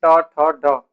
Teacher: ये जो ऊपर वाला स्थान है जैसे मैं बोलूं ट ठ ड यहां पर हमारी जीभ लग रही है वही है मूर्धा